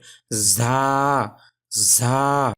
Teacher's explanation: দাঁতের গোড়ার সাথে লাগানো হয়েছে জিহ্বার আগা, এখান থেকে উচ্চারণ হচ্ছে ঝা।